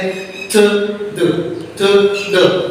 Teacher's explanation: इसमें हमारे tip of द tongue जो है ना अपर जो टीथ है उसकी बैक पे जाके टच होती है और थ द की साउंड प्रोड्यूस होती है, तो ये डेंटल साउंड कितनी है, दो टोटल साउंड है डेंटल जो है ना, ठीक है।